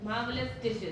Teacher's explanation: तो full stop में बहुत pause थोड़ी करता है. But मैम उसमें tone नीचे आ जाता है. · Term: falling